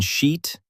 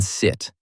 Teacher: The vowel in sheet is long and smooth. The vowel in sit is short and quick.